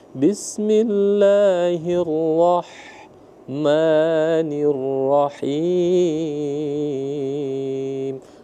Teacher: ha tipis atau ha pedas rongga tenggoroknya terbuka